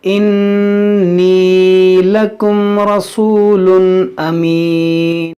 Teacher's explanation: देखिए यहाँ पर या मद्दा है, यहाँ नून मुसद्दद, इसमें गुन्ना करेंगे।